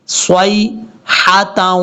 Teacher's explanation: یہاں پر صاد کو یا سے ملائیں گے، یہ یا لین ہے، اس کو لمبا نہیں کرنا